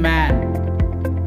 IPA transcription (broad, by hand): m